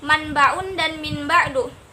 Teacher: Setelah proses asimilasi, huruf ba yang bersifat non nasal menjadi nasal karena terpengaruh oleh huruf nun. Jadi di situ huruf ba-nya menjadi nasal karena terpengaruh oleh huruf nun tadi.